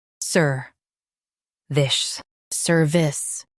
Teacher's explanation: Stress sir and keep this soft.